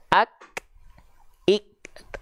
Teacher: Tapi kalau kaf, syiddah dulu dia, tertahan suara dulu, baru keluar sifat percikan nafasnya. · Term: huruf kaf